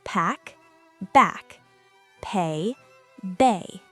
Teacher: bilabial, meaning the two lips blocked the air to form the sound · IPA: /b/